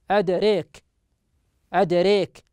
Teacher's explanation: أدريك أدريك بإمالة الألف وفتحة الراء قبلها